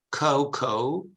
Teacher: in British English the diphthong is oh